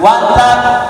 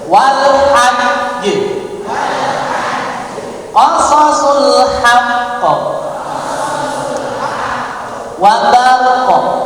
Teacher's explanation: huruf qalqalah bertasdid, maka ketika wakaf ketika wakaf ditahan sejenak